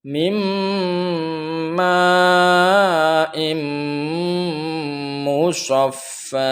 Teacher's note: Jadi dengungnya itu sampai kepada rongga hidung, seakan-akan kalau di sini ini disumbat maka tidak keluar suara. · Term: idgham bi gunnah